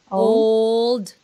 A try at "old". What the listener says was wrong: Remember to bring your tongue up when you do the L.